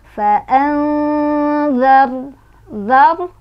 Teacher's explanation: nun sukunnya dibaca samar-samar sambil berdengung, di mana kadar samar dan dengungannya itu seimbang. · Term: ikhfa awsat